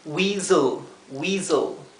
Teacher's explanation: Es como si pasáramos del Z, del zumbido de la S, a la L. Casi como si no tuviéramos una vocal, porque la vocal es muy cortita.